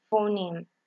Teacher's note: We have G, that is voiced, example lingual velar, stop, guitar. We have that is voiceless, labial dental, fricative, example phoneme.